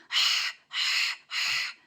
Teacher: यह हलक के दरमियान से निकलता है। बिल्कुल जहां अक्सर खाना खाओ तो अटक जाता है ना उस पोजीशन द सेंटर से निकलता है।